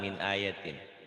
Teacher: A-nya au panjang, yatinnya pendek.